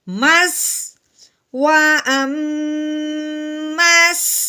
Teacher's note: ہم نے اس کی سیٹی والی آواز نکالنی ہے کیونکہ جو سین ہوتا ہے وہ سیٹی والا ہوتا ہے